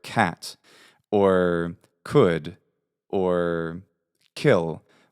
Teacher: when I say K there's a there's an H sound which follows it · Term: aspirate